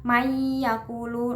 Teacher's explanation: nun sukun bertemu ya berarti Idgham Bighunnah cara membacanya dengan dimasukkan dan mendengung